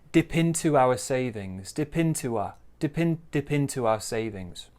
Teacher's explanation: we could say there's a bit of linking here too, because we've got a bit of a W sound there